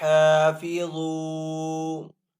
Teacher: حا کو ایک الف دو حرکات کے برابر کھینچ کر ادا کریں گے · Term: الف مدہ